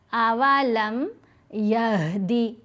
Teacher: हा गले के बिल्कुल नीचे वाले हिस्से से इसको अदा करेंगे।